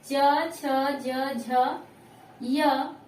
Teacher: च, छ, ज, झ, य, तलावी स, छोटी ई और बड़ी ई का उच्चारण होता है तालु से